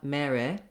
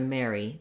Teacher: So no stress on the E, but still nice and bright and tense.